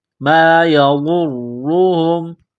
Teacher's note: غاد کو موٹا کرنا ہے، غاد کو را کے ساتھ ملانا ہے، را کے اوپر پیش ہے، را کو موٹا کرنا ہے